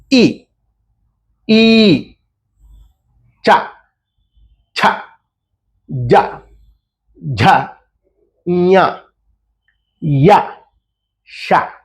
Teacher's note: తాలవ్యములు అంటారు అంటే దవడల్లో నుంచి పుడతాయి